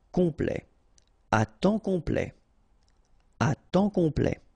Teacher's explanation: Temps, and then complet, okay, here a T at the end will open it, the sound of the E, so E, okay, plait, complet, complet, and then OM is nasal here, just because you get your P after that, so it's on, complet, à temps complet, à temps complet.